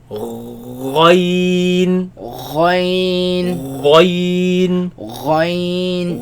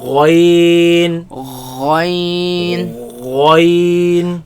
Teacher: But ghain, you move up a bit, same place the root of the tongue against the uvula, right? And it's heavy, right?